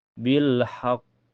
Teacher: alif lam ketemu huruf qamariyah yaitu ha. Cara bacanya alif lamnya terbaca jelas ya. Bil haqq. Di sini kalau kita berhenti menjadi hukum qalqalah akbar ya. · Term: alif lam qamariyah